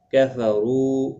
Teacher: رو واو مدہ ہے، ایک الف کی مقدار کے برابر کھینچ کر پڑھیں گے. اور یہاں پر را کے اوپر پیش بھی ہے، پر پڑھا جائے گا.